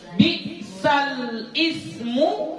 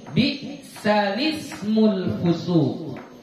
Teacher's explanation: Memindahkan baris hamzah wasal kepada huruf lam yang berbaris sukun. Jadi kita baca bi'salismul fusuq. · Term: an-naql